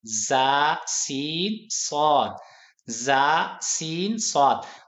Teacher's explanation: अब इनका मखरज क्या है? जुबान की नोक और अगले तमाम दांत।